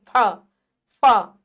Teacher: जब आप इसको बोलेंगे तो आपके मुंह से ना हवा निकलेगी हल्की सी, फ, फ, ठीक है।